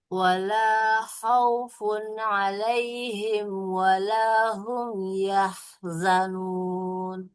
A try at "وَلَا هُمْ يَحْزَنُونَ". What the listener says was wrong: Jangan yah. Nanti ya-nya panjang. Yahzanun. Yahzanun. Nah, kemudian huruf H-nya kurang mengalir. Yahzanun. Yahzanun.